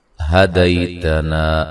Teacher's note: ہا کو اس کے مخرج سے نکالنا ہے جو کہ اقصی حلق ہے